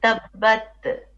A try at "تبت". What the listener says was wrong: No. Now you're making qalqala. You're saying tabbat. No. It's tabbat. There's a little bit of yeah? It's called hams. Tabbat.